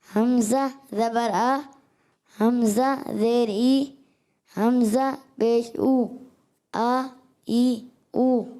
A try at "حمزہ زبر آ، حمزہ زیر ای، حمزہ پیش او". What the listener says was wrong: اور تھوڑا حمزہ کو واضح کرنا ہے کیونکہ یہ تفصیل نہ ہو جائے، نرم نہ ہو جائے. آ ای او.